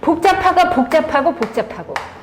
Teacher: 우선 지읒이 쌍지읒으로 바뀌었죠? 그러니까 된소리가 됐네요. 그렇죠? 그 다음에 비읍과 히읗이 만나서 피읍이 되고 있죠. · 비읍과 히읗이 만나서 피읍이 되고 있죠. 그래서 피읍은 거센 소리죠. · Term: 거센 소리 되기